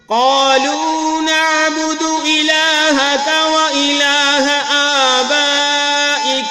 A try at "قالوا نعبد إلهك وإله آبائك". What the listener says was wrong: نعبد دال کو لمبا نہیں کرنا، وإلہ اس کو بھی لمبا نہیں کرنا، ہا کو اور کاف کو. قالوا نعبد إلهك وإله آبائك